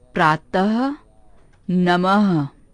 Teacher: यह निशान अक्षर के बाद लगाया जाता है। इसे बोलते समय ह जैसी आवाज आती है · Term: विसर्ग